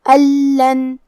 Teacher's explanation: کلمت لن لام حروف الادغام بغیر غنہ میں سے ہے تو ہم یہ نون کو لام میں ملا کے بغیر غنہ سے لیکن تشدید کے ساتھ یہ حکم کو ادا کریں گے